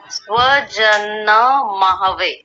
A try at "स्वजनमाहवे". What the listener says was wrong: माहवे, माहवे नहीं, माहवे, ह को भी पूरा कीजिए, आप आधा कर रहे हैं।